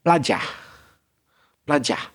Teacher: The important bit is the bit at the end, ah. So ERs are particularly short in English. Anything which ends ER, OR, that type of thing. · in Australia, I would say there's even less hint of the R.